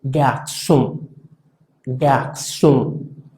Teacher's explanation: Es como si de alguna manera detuviéramos el sonido de esa N nasalmente. De hecho, si intentas decir on tapándote la nariz, fíjate, suena O. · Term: sonido nasal